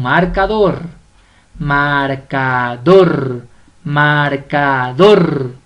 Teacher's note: la mayor fuerza de voz va en la última sílaba entonces es aguda